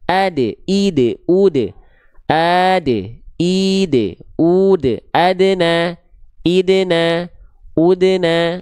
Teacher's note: Ketika dal dalam kondisi sukun dia punya sifat qalqalah artinya memantul atau pantulan. Karena huruf dalnya berada di tengah kalimat, bukan pada saat wakaf atau berhenti. · dibaca harus ada pantulan karena dia punya sifat qalqalah